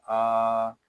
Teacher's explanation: حمزہ کو ایک الف تک کھینچ کر پڑھیں گے، کیونکہ حمزہ کے اوپر کھڑا زبر آ گیا ہے